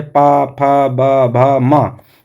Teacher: पा जो है ये इसका उच्चारण ओष्ठ से होता है।